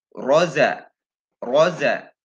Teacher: Ro berharokat fathah dibaca tebal. Di mana ditumpukan, ujung lidah ditumpukan ke gusi bagian depan atas ya. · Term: Ro tebal